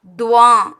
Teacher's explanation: துவா அந்த மூக்கால் ப்ரொனவுன்ஸ் பண்ணுற மாதிரி வருது பாருங்கள். அந்த மாதிரி ப்ரொனவுன்ஸ் பண்ணணும். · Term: அனுநாசிக்